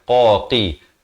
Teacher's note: Qaf makhrajnya di pangkal lidah.